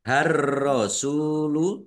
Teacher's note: Baru yu, ayyu, har-rasulu, ar-rasulu, alif lam samsiah, karena tidak dibaca, langsung masuk ke huruf berikutnya, yaitu ro, ditandai ro-nya ada tasdidnya. Ro-nya dibaca double.